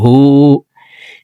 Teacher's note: হু এখানে ঠোঁট গোল করে 1 আলিফ টেনে পড়তে হবে, কারণ হার উপরে উল্টা পেশ আছে।